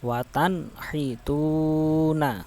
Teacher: Watan hituna itu tidak boleh dibaca dengung, nggak boleh. Watan hituna nggak boleh ya, harus dibaca jelas, izhar.